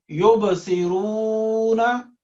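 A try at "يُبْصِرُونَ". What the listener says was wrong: ना लंबा नहीं करना।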